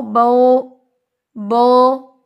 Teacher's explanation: ہم اچھے سے ہونٹ جب گول نہیں کرتے تو یہ آواز بن جاتی ہے بو، جو کہ رانگ ہے